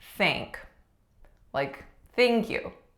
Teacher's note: a voiceless th it may become tank if you do not put in the th or it may often become sank